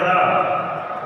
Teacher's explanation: रा और मूर्धन्य सकार का उच्चारण स्थान मूर्धा है